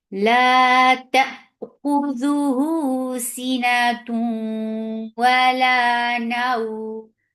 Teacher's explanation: This temporary sukun has turned this 2 counts long vowel into 4. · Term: madleen